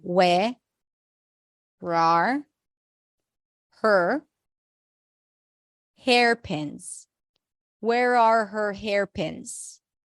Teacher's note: so where are is reduced to where